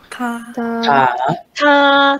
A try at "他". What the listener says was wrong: 很 好 。A ▁little ▁bit ▁higher， ▁他 。